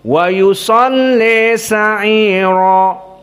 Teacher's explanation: seperti Wars an-Nafi', namun dibaca dalam keadaan al-imalah al-kubra.